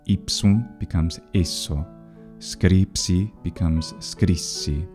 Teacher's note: It did in fact become long because of compensatory lengthening through the loss of the N in front of the S, making it nasalized. PS regularly becomes just a long S sound.